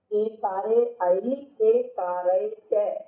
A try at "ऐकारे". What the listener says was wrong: ऐकारे च, एकारे नहीं, इसको ऐ बोलो।